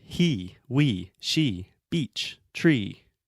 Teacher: this e sound always stays the same it doesn't change so it is a fixed vowel